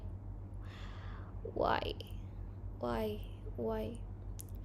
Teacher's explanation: it is sound where the articulators move from a more constricted to a more open positions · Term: Glides